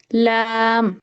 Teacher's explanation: লাম লামের ক্ষেত্রে হচ্ছে লাম জিহ্বার আগা, আহ, লাম উপরের সামনে দাঁতের গোড়ার সাথে লাগবে। আচ্ছা লাম জিহ্বার আগার সরু ভাগটা হচ্ছে উপরের দুই দাঁতের গোড়ার সাথে লাগে।